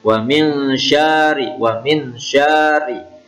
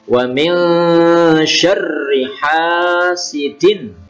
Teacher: Ini wa min syarr, wa min, ini nun sukun ketemu shin, bacaan ikhfa hakiki. Kemudian ra ini bertasydid syar, tidak boleh dibaca syari